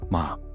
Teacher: Ma, scold, sharp fall.